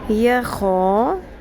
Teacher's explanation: یا زبر یا، خو زبر الف خو، یا خو، خراش بھی رکھنی ہے اور پر بھی کرنا ہے